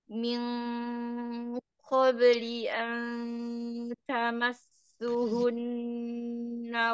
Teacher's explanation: sempurnakan harokat kasrohnya kemudian tebalkan di kofnya